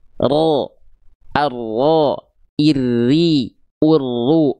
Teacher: Takrir itu artinya bergetar, tapi getaran yang dimaksud dari huruf ro itu bukan getaran yang karakternya berlebihan. Dia getarannya sedikit saja, ya, tapi tetap tegas dan jelas.